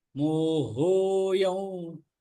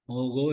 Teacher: ஹோ தொண்டையிலேருந்து வரணும், மோகோ இல்ல